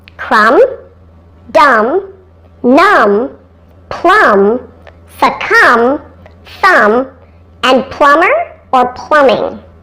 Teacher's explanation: the largest number of these silent B words have a short u sound